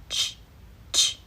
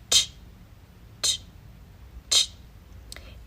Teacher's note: this is an affricate, not a fricative, which means there's this process of breaking through the obstruction with air